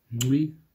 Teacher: you're holding an N, and while you're holding that N, you're pronouncing the click. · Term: nasalized click